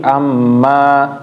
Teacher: untuk mad thobi'i dua aja jangan kepanjangan